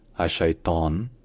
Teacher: le L dans al est assimilé au che, donc ça devient un che qui est long